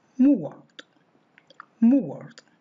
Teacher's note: For speakers who have this diphthong, this has a starting point similar to short u.